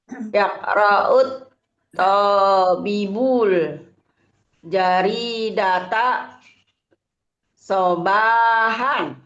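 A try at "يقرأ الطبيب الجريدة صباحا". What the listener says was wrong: Panjang pendeknya ada yang terdengar belum pas sepertinya.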